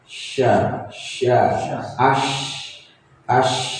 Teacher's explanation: syin ini mempunyai sifat huruf ee hamis juga. mengalir ee nafasnya ya.